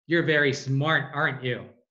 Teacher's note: it's falling and i know that you're smart